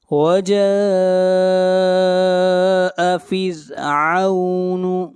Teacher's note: یہاں پر را کو باریک پڑھیں گے، را سے پہلے زیر ہے